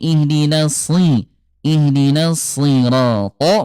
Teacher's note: huruf shad dia tetap tebal walaupun kasrah ya